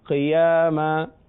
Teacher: قاف کے نیچے زیر ہے مگر حروف مستعلیہ ہے لہذا پر پڑھیں گے